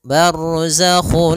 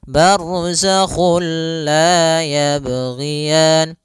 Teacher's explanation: juga sendiri itu idgham yang kita namakan juga idgam Kamil yaitu kita memasukkannya secara utuh secara seluruhan kepada huruf lam sehingga tidak menyisahkan sedikit daripada bunyi huruf nunnya ya Sehingga langsung masuk barzakulla dan dia bila gunah berarti tidak